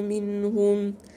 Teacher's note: منهم إظهار حلقي لأن النون وراها هاء